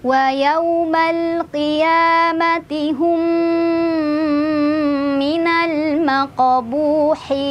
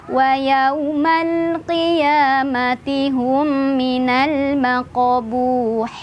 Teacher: Nah, sekarang yang idgham mimi. Mim sukun bertemu dengan mim, ini tahan dulu sambil berdengung.